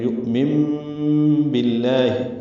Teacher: نون ساکن کی بعد با آنے کی وجہ سے اقلاب ہے، نون کی جگہ میم پڑھیں گے